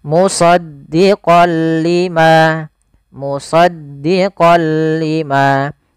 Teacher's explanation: memasukkan apa suara nunnya kepada huruf lam tapi tidak boleh disertai dengan ghunah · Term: Idgham bila gunah, idgham bila gunnah